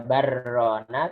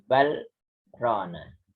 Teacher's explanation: berhenti tapi sejenak tapi tidak bernafas. Nah, tidak dibaca barrona tapi balrona. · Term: saktah